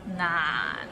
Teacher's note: so it starts with n and ends with another end not and it's in the low tone